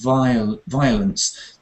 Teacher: that word violence is interesting because um you don't want to stress the O there